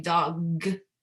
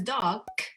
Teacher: g and k are basically pronounced the same way except for that voicing part · instead of saying dog which is a voiced sound you say it as dok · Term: devoice